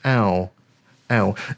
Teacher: So it's similar to E, just through the nose. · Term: nasal letter sound